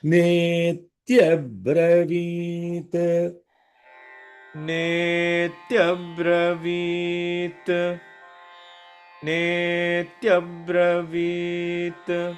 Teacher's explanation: nay is a long vowel, so there is a longer holding, two holds